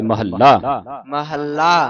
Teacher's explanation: ਮਹਿਲਾ ਨਹੀਂ ਪੜ੍ਨਾ ਇਹ ਮਹੱਲਾ ਉਚਾਰਨ ਕਰਨਾ ਅਧਿਕ ਲਾ ਕੇ